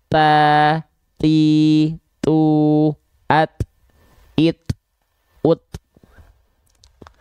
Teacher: ketika kita melafalkan huruf ta sukun atau huruf ta, dia pastikan kadar hamsnya hanya berupa percikan nafas.